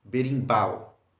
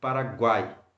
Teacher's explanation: so all of these words are stressed at the end of them why because you have two or more vowels together at the end of the word